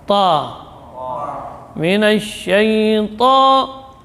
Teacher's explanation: Tidak cenderung ke o, tidak juga cenderung ke a, tapi dia ya bunyinya fathah namun tebal.